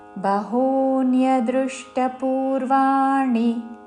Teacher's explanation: బహూ హూ దీర్ఘము, దాని మీద ఆఘాత